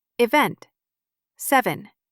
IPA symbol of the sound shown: ə